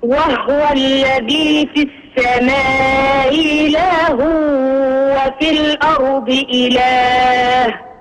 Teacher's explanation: مسهل الهمزة بين الهمزة والياء